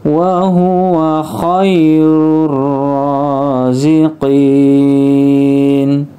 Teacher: Ko ketemu ya maka menjadi ya-nya huruf i koirur ah rurnya langsung dimasukkan ke huruf ro Alif lamnya tidak dibaca disebut idgham Syamsiyah · huruf ro-nya sini ya r-nya panjang harakat berdiri kirur roziqin zqin qinnya dibaca panjang nunnya disukunkan